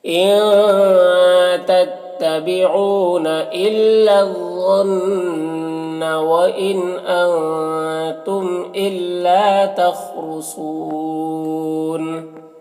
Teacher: تخرسون، خاء کو پر پڑھیں گے، را کو پر پڑھیں گے، سون میں صاد کو بھی پر پڑھیں گے، اور یہاں پر وقف کی صورت میں نون کا زبر سکون سے بدل جائے گا، تو مد عارض وقفی ہوگا